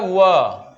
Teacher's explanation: तो व का उच्चारण स्थान होता है दंतोष्ठ।